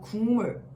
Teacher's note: 화면상 기억 받침을 가지고 있는 이 단어는 우리가 발음을 하게 되면 바로 국물, 이렇게 발음을 하게 되죠. 기역 받침이 어떤 환경에 의해 변화를 겪어 이응으로 바뀌게 되는 것이랍니다